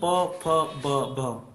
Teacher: आपके लिप क्या होंगे टच होंगे